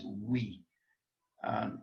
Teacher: And the upsilon, iota are pronounced we. One sound, not two.